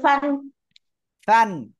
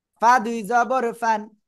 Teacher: নিচে ঠোঁটের পেট, ফান। সামনের উপরে দুই দাঁতের আগায় লাগিয়ে হালকা বাতাস বের করে উচ্চারণ করতে হবে।